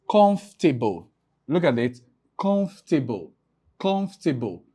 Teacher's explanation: Then the second to the last syllable and the last syllable. So the OR is a schwa sound. It's usually not produced or pronounced. So what I mean by that is we only pronounce comfortable.